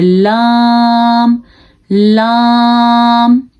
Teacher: زبان کا سرا جب اوپر منہ کے ساتھ ٹچ ہوتا ہے تو لام ادا ہوتا ہے